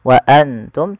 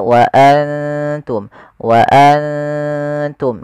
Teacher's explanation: kita samarkan nunnya kepada huruf ta dan ditahan dua harakat. Bukan hanya sekedar wa antum tapi dia wa antum. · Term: ikhfa